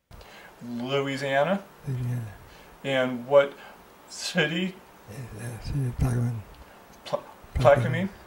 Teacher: You've got a breathy, maybe rough voice, unclear articulation and monotone.